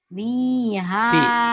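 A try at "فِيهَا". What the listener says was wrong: Fi. Kedengarannya bibirnya kayak biha. Fi ya.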